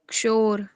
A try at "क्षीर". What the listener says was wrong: शोर नहीं है, शीर है।